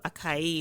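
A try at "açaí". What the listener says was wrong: No, there's a little S under the C. It literally tells you pronounce me as an S.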